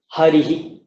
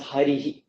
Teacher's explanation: it's just a release of the breath in the same shape as the vowel that preceded it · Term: visarga